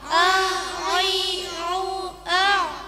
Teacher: Bacaan ain dengan suara tertahan atau antara a dan nga. Tidak a, i, u dan tidak nga, ni, u.